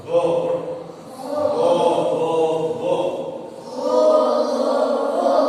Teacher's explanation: kalau makhrajnya ho itu di tenggorok, ya. Sehingga kalau ucap ho di sini seolah ada getarannya.